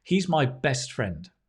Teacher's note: we're going to put the stress on the collocation on the adjectives